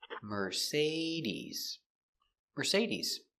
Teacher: The stress is on the say.